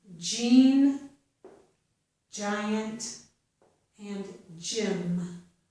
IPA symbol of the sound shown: dʒ